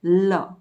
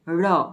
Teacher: અને તેથી ળ એ થડકારવાળું વ્યંજન છે, લ દંત્ય પાર્શ્વિક છે અને ળ મૂર્ધન્ય થડકારવાળો વ્યંજન છે